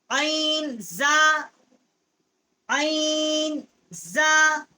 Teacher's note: عین جو ہے واسطے حلق سے اس کا مخرج ہے.